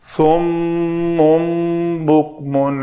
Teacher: نون ساکن کے بعد با آ جائے تو اس نون کو میم سے بدل کر پڑھتے ہیں